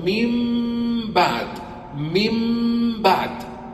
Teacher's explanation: اطبقت الشفتين من اطباق كامل من بعد جبت الغنه غنه كامله لاحظ من بعد حلقتان وما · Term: الاقلاب